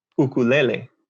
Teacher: at the very beginning of that sound is not a u it's a glottal stop